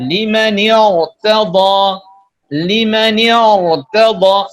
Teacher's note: ra itu dibaca tebal berarti tidak tipis. disebabkan karena harokat kasrah sebelum ra sukun itu laisat aslah, tidak asli